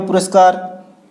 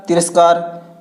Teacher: विसर्ग के स्थान पर दंत्य स हो रहा है